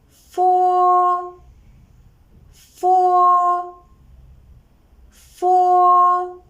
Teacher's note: Fo is a voiceless labial dental fricative sound. When we pronounce it, the upper teeth make a light contact with the lower teeth, and the air is released in between with friction. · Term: labiodental fricative sound